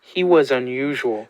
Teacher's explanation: you can hear that stress it's more intense a little bit longer he's leaning into that second syllable as i said before he was unusual so it's more prominent